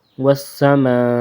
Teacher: آخر میں ایسے ہلکی سی آواز نکلنی حمزہ کی